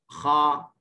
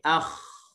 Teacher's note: makhraj bagi huruf kha. Dia berada di halqum. Halqum yang paling atas sekali lah. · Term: adnal halq